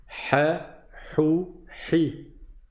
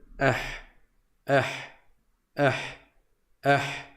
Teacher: Il n'y a pas de point, donc on dit ah. Rappelez-vous, la lettre ha est au milieu de la gorge.